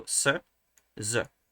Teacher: one it's the same place of articulation uh which say alveola so at the top of the teeth it's the same place of articulation it's the manner of articulation it's ative the only difference is